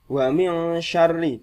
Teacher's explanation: di sini ada lagi nun sukun bertemu shin, mendengun.